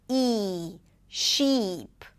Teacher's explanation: the tongue is higher, the lips pull to the sides. E, sheep, versus the lax E, the mouth is more open, the tongue is lower, so you want to imagine as if you have more space between the tongue and the upper palate.